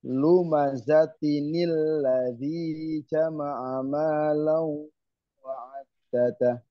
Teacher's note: Namanya nun iwat. Nun iwat itu nun yang digunakan untuk menyambungkan, mewasolkan dari ayat pertama ke ayat kedua. Jadi kalau diwasolkan, lumazatinil ladzi jama'a malau wa'addada.